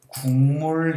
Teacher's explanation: 국물할 땐 이응으로 돼 버리네